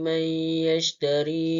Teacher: Pada perkataan man yashtari, di mana nun bertemu dengan ya merupakan hukum tajwid idgham al-hunnah, di mana memasukkan huruf nun sukun itu ke dalam huruf yang kedua iaitu ya berserta dengung 2 harakat